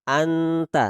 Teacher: Digabungkan dua huruf tersebut, nun dan ta, sehingga tidak kita baca ng tapi nt, anta. Jadi dibuat sesamar mungkin antara n dan huruf t. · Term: ikhfa a'la